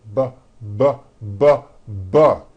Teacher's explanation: we'll add voicing by vibrating our vocal cords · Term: B sound